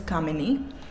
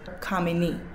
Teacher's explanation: the first sound being the stronger one so I could say my name has three sounds or three syllables with the first sound or the first syllable stressed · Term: word stress